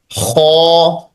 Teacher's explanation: इसका मखरेज जो है वो हलक के शुरू वाले हिस्से से ख पढ़ा जाता है